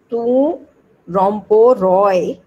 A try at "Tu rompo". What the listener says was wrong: Not Roy. It is not Roy. Tu rompo. This is rompo. Open.